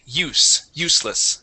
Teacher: the first s in the word useless is a voiceless s